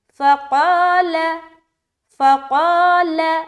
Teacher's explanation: قاف موٹا حرف ہے، اس کے ساتھ الف لگ کر آ رہا ہے تو الف بھی موٹا پڑھا جائے گا، اور لام زبر لا، فقال، فقال، لام بالکل باریک ہوگا، قا موٹا پڑھیں گے، فقال۔